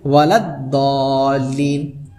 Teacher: ولضالین, ٹھیک ہے, ڈائریکٹ وہ کہاں سے ملا, یعنی ضاد سے ملا, یعنی شمسی سے ملا, ٹھیک ہے. الف بھی چھوڑ دیے, لام بھی چھوڑ دیے, دور سے ڈائریکٹ ملا